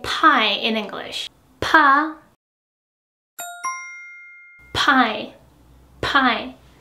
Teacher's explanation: when you pronounce pa, that has an aspirated consonant at first, you will be seeing it from the paper that air strongly comes out from your mouth. Just like pronouncing pie in English.